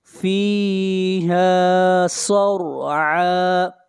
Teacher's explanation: صاد کو موٹا پڑھیں گے، صاد حروف مستعلیہ میں سے ہے، اور را کو موٹا پڑھیں گے، را سے پہلے زبر ہے۔